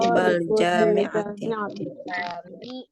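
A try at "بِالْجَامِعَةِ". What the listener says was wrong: bil ya, bukan bal ya. Bil.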